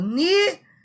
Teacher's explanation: a palavra nível é uma paroxítona porque é a penúltima sílaba mais forte